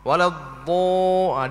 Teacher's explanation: Seperti yang dibuat oleh orang yang jahil ketika mengucap waladhdallin, maka dia himpunkan dua bibirnya hingga berubah baris fathah kepada baris dhammah